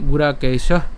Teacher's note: এখানে বিসর্গ যেহেতু আছে এই জন্য আমরা উষ্ম ছাড়লাম